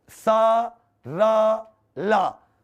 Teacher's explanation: ऊपर वाले दांत का जो जबड़ा है उसके मसूड़े को टच कर रही है, अंदर वाले मसूड़े को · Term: वर्त से